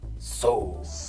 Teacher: You don't have the theta, the TH sound, and hard R.